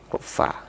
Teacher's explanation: bagian daripada huruf Hamas atau huruf yang ada anginnya ada desisnya ya Fa jadi saya persenkan itu 50% lebih kurang desisnya itu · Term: sifatnya hams